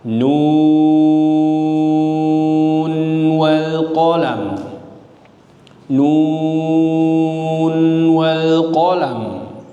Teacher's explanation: Jadi mesti dibaca jelas nunnya ketika wasal. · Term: izhar riwayat